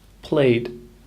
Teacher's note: The word played has a very soft d or d sound at the end. Played. Imagining it was spelt P-L-A-Y-D may help you here.